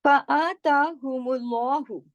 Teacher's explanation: فآ کھڑی زبر ہے، تا کھڑی زبر ہے، ایک الف کے برابر پڑھا جائے گا